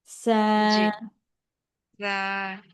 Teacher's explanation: সা হচ্ছে আপু জিহ্বার আগাটা উপরে দুই দাঁতের আগার সাথে লাগবে